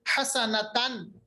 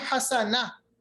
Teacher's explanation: जब हम वक्फ करते हैं गोलता पर, तो वक्फ की हालत में ये गोलता जो है ये हा साकिन में तब्दील हो जाता है।